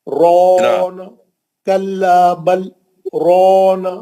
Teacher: را کو موٹا پڑھنا ہے نا, را پہ زبر ہے نا, اور مد اصلی ہے نا رونا. کلا بل رونا مد اصلی بھی کرنا ہے نا.